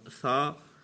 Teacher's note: اور یہ زبان کا سرا، زبان کا بالکل جو سرا ہے، انتہا جہاں پہ زبان ختم ہو رہی ہے، زبان کا جو بالکل سرا ہے، اوپر کے دانتوں کے اندرونی کنارے سے لگتے ہوئے یہ ادا ہوتا ہے